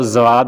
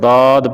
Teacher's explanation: زبان کی کروٹ اور اوپر کی داڑھوں کی جڑ سے، جو اوپر کی داڑھیں ہوتی ہیں اس کی جڑوں کے ساتھ اس زبان کا کروٹ لگائیں گے تو یہ ضاد پڑھا جائے گا۔